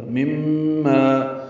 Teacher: میم مشدد پہ غنہ ہوگا اور ما الف مدہ ہے، 2 حرکات لمبا ہے